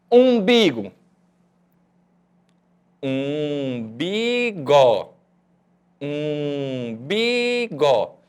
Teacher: Porque as sílabas bi e gó não são nasais.